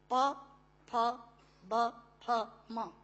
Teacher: दोनों होंठ मिलाकर बोले जा सकते हैं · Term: ओष्ठांग